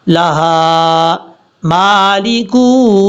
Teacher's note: لام کے بعد جو ہا ہے یہ ہا بھاری ساؤنڈ کے ساتھ پڑھا جائے گا